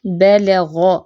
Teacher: اب با اور لام لائٹ ہے، غین موٹا حرف ہے